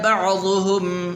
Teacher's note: عین آپ نے نکالنا ہے، حمزہ نہیں پڑھنا